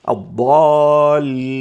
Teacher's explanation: فإن جاءت الألف بعد الضاد تصبح الألف أيضا مفخمة. الضالين لا نقول الضالين، خطأ، الصواب الضالين.